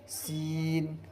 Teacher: نوک زبان اوپر نیچے کے دانتوں سے مل کر سین ادا ہوتا ہے۔